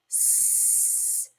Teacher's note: if you make the s sound and you hold it out and you put your hand here in your voice box, s, you can clearly hear it's unvoiced